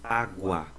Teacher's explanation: Letra U, menos força, sinalzinho de menos. Letra A, vogal, sinalzinho de mais, ditongo crescente.